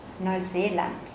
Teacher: trọng âm rơi vào hai chữ e ở đây nên chúng ta sẽ đọc mạnh hơn và kéo dài ra một chút